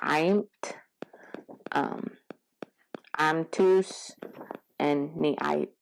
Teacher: it's pronounced in your pharynx, in your throat, and that's why they call it a pharyngeal